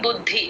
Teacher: ద కింద ద ఒత్తు మహాప్రాణం రెండు వినిపించాలి